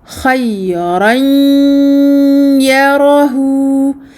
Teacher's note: j'ai complètement refermé l'accès à la cavité bucale le son n'est sorti que par la cavité nasale